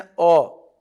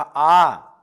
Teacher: अ में समय कम लगा, आ में थोड़ा ज्यादा लगा